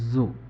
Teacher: প্রথম জটা আমরা যখন উচ্চারণ করি তখন আমাদের জিহ্বার উপর দিয়ে বাতাস পাস হতে পারে, যেমন জু। জিহ্বাটা বেশ সামনের দিকে এগিয়ে আসে এবং জিহ্বা এবং জিহ্বার উপরে যে দাঁতের পিছনের অংশ এইখান কাছাকাছি চলে যায় এবং এইখান থেকে একটু বাতাস পাস হতে পারে